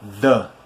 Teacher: o som do TH é feito com a língua, nos incisivos superiores. Incisivos são esses dentes, de cima aqui da boca, ok?